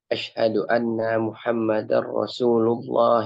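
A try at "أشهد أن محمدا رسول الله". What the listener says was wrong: Tidak usah didegomkan karena ini bukan ayat Al-Quran ya. Jadi dibaca apa adanya.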